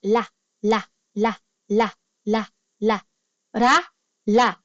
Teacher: Sa Korean language po, ang R at L consonant ay parehas lang. Same sound po sa Korean.